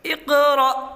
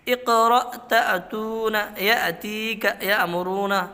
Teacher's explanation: اقرأ تأتون یأتیک یأمرون، ان سب کے اندر کیا ہوگا؟ جھٹکے سے حمزہ پڑھا جائے گا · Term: حمزہ ساکنہ